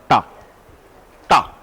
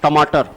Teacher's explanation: ये tonsil, tonsil जहां से टा बोल रहे हैं आप, टा, टा। उतना अच्छा टा आएगा जितना जीवा पीछे जाएगी। टमाटर, और अगर यहां रहेगा टमाटर, पीछे गए तो एकदम बढ़िया टमाटर। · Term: मूर्धन्य